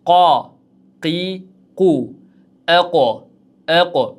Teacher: Xuddiki jim harfi, dal harfi, ba harfi kabi qof harfi ham tebranar ekan. Va qof harfi uyug'on talaffuz bo'ladigan harf.